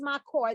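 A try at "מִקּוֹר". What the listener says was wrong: notice the different vowel under the mem.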